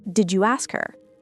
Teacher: We also see elision with the H sound in unstressed pronouns like he, him, his, her.